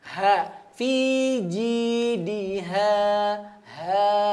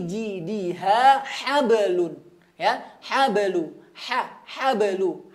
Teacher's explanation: Tadi ha pangkal tenggorokan, kemudian hablun, ha tengah tenggorokan lagi.